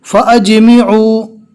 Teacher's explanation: तो जहाँ पर भी छोटी मद आवे और वहाँ पर अगर हमें रुक जाना है, वक्फ करना है, तो रुकने और वक्फ की हालत में मद नहीं करेंगे, सिर्फ एक अलिफ के बराबर खींच कर पढ़ेंगे